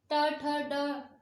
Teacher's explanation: मूर्धा जिसमें जीभ हमारी ऊपर लग के वापस आएगी